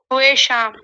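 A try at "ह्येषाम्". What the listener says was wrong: ये शाम ह है और साथ में य है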